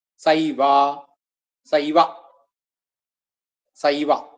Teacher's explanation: സാ ഏ കൂടുമ്പോഴ് ഐ എന്നാവും